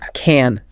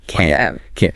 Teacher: can when you're able to do something is short and unstressed right but can't expressing inability is longer and stressed yeah it's like you're putting more emphasis on the a sound